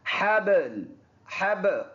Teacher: حا با زبر حب، با ان الفاظ میں جن میں حروف قلقلہ جس کو ہم کہتے ہیں آواز واپس ریباؤنڈ ہو کے ہماری طرف آئے گی